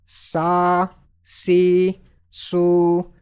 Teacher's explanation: So sin will be pronounced with whistle, but in thin tone.